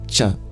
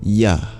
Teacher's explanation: in the sound CH compare that to the same place of articulation but the semivowel Y